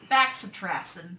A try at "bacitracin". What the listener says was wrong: It's bacitracin. No! Number one, there's no X. And number two, it's bacitracin.